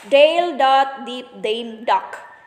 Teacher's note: The woman packed the cooked food. Voice alveolar stop, D.